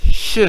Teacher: The sound sh is technically known as an unvoiced post-alveolar fricative